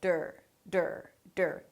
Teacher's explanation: A D sound, schwa R, which is technically DR.